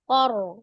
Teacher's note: Maka ro-nya dibaca dengan tebal ya. Tafkhim.